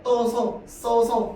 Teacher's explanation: 자연스럽게 으가 탈락되고 떠서, 써서, 그 다음에 따라서 이렇게 되죠. 자, 그래서 이렇게 으 소리가 탈락하는 거 으 탈락이죠.